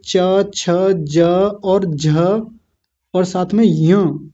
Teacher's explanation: इन वर्णों का उच्चारण जब हम करते हैं तो हमारी जीभ ऊपर जहां जाके जहां लगती है उसको तालू कहा जाता है